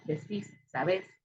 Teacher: lleva el énfasis en la última sílaba, que es aguda y termina en S, entonces debe llevar acento, ¿no?